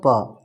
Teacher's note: पा दोस्तों अघोष वर्ण है